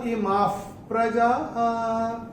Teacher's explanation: मां के बाद विसर्ग के बाद का अक्षर है प, और विसर्ग के बाद जब प या फ आता है तो विसर्ग का उच्चारण होता है फ। जैसे हम फूंक मारते हैं ना वैसा फ।